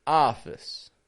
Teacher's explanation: if you listen closely, you'll notice that there's a schwa in that office. Office.